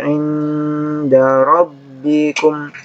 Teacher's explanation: Ini nun sukun kata mudal, inda ikhfa didengungkan dan disamarkan